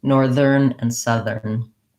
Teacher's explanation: when it goes in the middle, northern, it turns into the voiced TH